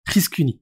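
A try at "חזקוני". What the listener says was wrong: Non, Chriskouni. Chriskouni. Là, il y a un waouh. Ça existe pas, le U en hébreu.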